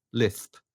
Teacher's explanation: you can mimic a lisp by just going th instead of s